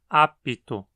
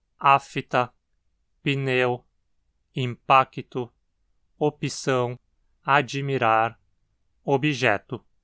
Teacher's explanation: muitos inserem um som extra entre o P e o T como se houvesse uma vogal I ali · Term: epêntese